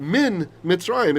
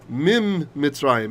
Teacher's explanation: sandwich it together and the N assimilates